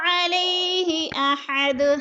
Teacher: علیہ کی یا کو لمبا نہیں کریں گے، یا لین ہے اور جھٹکا بھی نہیں دیں گے